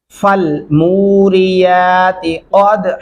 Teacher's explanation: गले से अदा करेंगे और दाल पे कलकला करेंगे